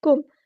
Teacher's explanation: کاف باریک ادا کریں گے اور کاف کے پیش کو اچھے سے پڑھنا ہے، کوم نہیں کرنا، کم.